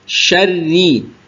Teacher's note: rnya tasdid dan kasrah maka dia tipis